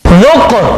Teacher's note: یہ قاف حروف قلقلہ میں سے آواز لوٹتی ہوئی نکلے گی